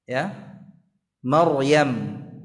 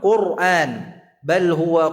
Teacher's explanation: ro sukun yang didahului oleh fathah atau damah maka dibaca dengan tebal